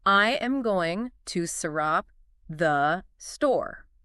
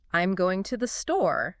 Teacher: I'm going is one chunk. To the store is another. Much smoother.